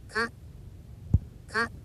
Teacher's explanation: It's not a rising tone. It's not a prolonged tone. Ka. And a bit of stress at the end.